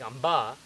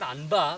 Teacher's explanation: if you have a bindu before ba, like amba, this is not anba, but this is amba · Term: makara